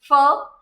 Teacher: अगर फ sound pronounce कर रहे हैं, तो लोअर लिप और अपर टीथ ये ज्वाइंट होंगे, एक बार हवा रुकेगी फिर बाहर जाएगी।